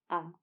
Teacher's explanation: जब आ को उच्चारित करेंगे तो आप यह देख पाएंगे कि आ को उच्चारित करते समय बाकी स्वरों की तुलना में आपका मुह ज्यादा खुल रहा है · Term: विवृत स्वर